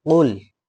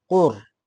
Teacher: So qaf, lam, qul, qaf, lam, qaf, lam. Then it has ra with shaddah, ra with shaddah. So we cannot say qul, we have to say qur.